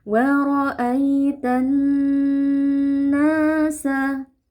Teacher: karena huruf nunnya bertasydid, maka wajib kita baca dengan ghunah ya atau kita panjangkan dengungnya sedikit · nanya-nya terdapat mad thabi'i. Kita baca panjang dua harakat. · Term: gunnah